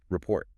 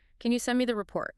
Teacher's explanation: The stress lands heavily on the second half.